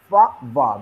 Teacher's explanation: Upper teeth and lower lip creates a block, then air passes through the friction. That's why labiodental, because lip and dental, labiodental fricative.